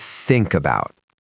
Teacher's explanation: But when you speak naturally, the k at the end of think doesn't release into silence, it pushes directly into the vowel that opens about. The result sounds like the two words have merged into one unit.